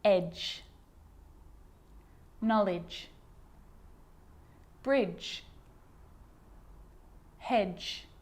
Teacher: a D can be very quiet not quite silent but very quiet in front of a G